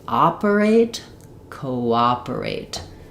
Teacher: Really work on that vowel to vowel linking